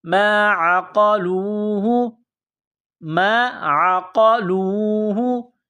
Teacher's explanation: قاف کو موٹا کرنا ہے، نقطہ والا قاف ہے، لام کو واو کے ساتھ ملانا ہے۔